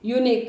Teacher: U is a vowel, but their sound is a consonant sound, YU.